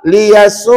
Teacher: Jangan dimatikan hamzah itu. Dia kena baca u 2 harakat. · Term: mak wajib muttasil